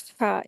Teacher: तो दो चश्मी वाला ह और ये जीम वाला जो हा इसमें एक ही फर्क होता है कि इस वाले हा को जीम वाला ह जो होता है इसको अलग से अच्छे से अदा करेंगे और हमस के साथ अदा करते हैं। थोड़ा सा सांस का जारी रहना होता है।